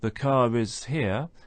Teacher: then we have a linking R because it's followed by is